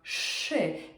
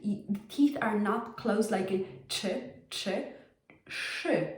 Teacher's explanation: And there's actually a gap between the teeth. The teeth are not closed like in ch.